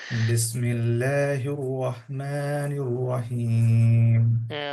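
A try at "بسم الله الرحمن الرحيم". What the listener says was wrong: রহমান রয়ের সময় ঠোঁটগুলো হচ্ছে, এটা ঠিক করবেন। হ্যাঁ, আপনি আয়না নিয়ে দেখবেন আপনার র বলার সময় ঠোঁটগুলো হয়ে যায়।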